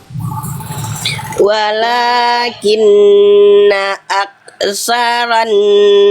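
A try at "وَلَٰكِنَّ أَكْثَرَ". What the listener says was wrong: Ro, bukan ra. Angkat pangkal lidah. Walakinna aksaron ro.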